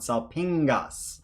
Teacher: So notice in this last word, the double gammas here make a nasal sound